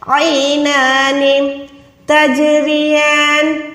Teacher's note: را کو باریک رکھیں گے، زیر کے ساتھ ہے۔ · جو حلق کے درمیان میں ہڈی ہوتی ہے، عین کو آپ نے وہاں تک آواز کو لے جا کے وہاں سے ادا کریں، یا کے ساتھ ملا کے حروف لین کو ادا کریں۔